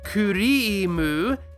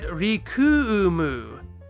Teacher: The choonpu, which elongates sounds, gets disconnected from the “ri” and gets hooked up to the “ku.”